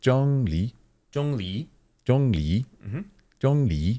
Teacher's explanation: Jong is like the highest part of your natural register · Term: first tone